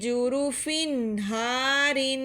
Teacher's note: جورو فن. تنوین پر ہم غنہ کرتے ہیں، لیکن حروف ہلکی میں سے ہا آ گیا ہے